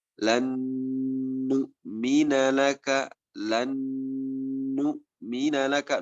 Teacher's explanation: nun sukun bertemu dengan nun, nunnya lebur. Nah, ini biasanya hukumnya setara dengan gunnah asliyah, karena sama nun sukun bertemu dengan nun harokat.